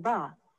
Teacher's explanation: you are probably adding a short u sound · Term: extra vowel sound